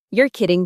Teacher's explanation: Now add a little rise in your tone at the end.